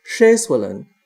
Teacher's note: the first syllable has a long A sound, and it's at a higher pitch than the rest of the word